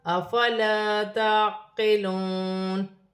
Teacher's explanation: یہاں پر الف مدہ بن رہی ہے، ایک الف کی مقدار کھینچ کر پڑھا جائے گا